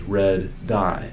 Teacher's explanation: we need to stop and hold the first D sound and release it at the second D. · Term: gemination method